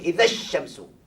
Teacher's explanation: lam syamsiah dia Alif lamam Syamsiah Syamsiah jadi ertinya apa ertinya lam syamsiah ni hendaklah dimasukkan terus kepada huruf yang bersabdu